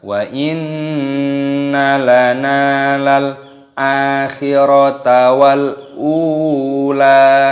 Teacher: Lal akhirata wal, lam alif, lamnya sukun dibaca wal ula, unya panjangkan, ada wawu sukun dipanjangkan, 2 ketukan, lamnya juga dibaca panjang. · nunnya dipanjangkan, ada tanda alifnya matobi'i, 2 ketukan. Wa inna lana lal, lamnya sukun dibaca lal a, di sini alifnya dipanjangkan.